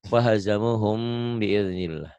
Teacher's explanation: bunyi M, bibir atas bibir bawah mingkem tapi bindeng